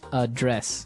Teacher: So the verb address has the stress on the second syllable.